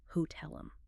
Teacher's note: Where does the stress land? It lands on the second syllable. Hotel. Because the T is situated at the very beginning of a stressed syllable, it commands phonetic attention. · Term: crisp true T